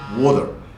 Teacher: A single tap against the alveolar ridge would give you water, like in American English.